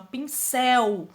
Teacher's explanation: pincel é oxítona, porque a sílaba tônica mais forte é a última